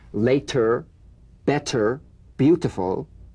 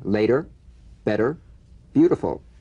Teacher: the medial T becomes a soft D alright it's not a complete D but it goes toward a D we don't say later better beautiful we say later better beautiful